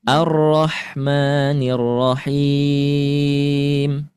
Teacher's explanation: Rnya dibaca tebal. Kenapa tebal? Karena sebelumnya ada fathah. Sebelumnya ada fathah.